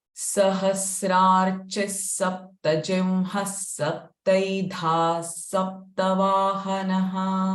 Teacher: All visarga sound in first line will be sa.